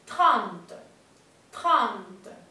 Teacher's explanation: Esa EN es una A nasal, entonces vamos a poner la boca para decir una A y bajamos la mandíbula.